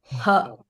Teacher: the H is guttural, which makes sense because you put it in the back of your throat